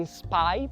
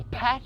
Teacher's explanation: Enquanto em spy, por causa desse S antes, desse S antes, o P em spy não é aspirado. Então o P em path é aspirado.